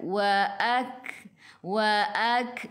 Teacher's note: Sikit sahaja angin pada huruf kaf kerana sifat huruf kaf hamas, kena keluar angin sikit sahaja. Jangan banyak.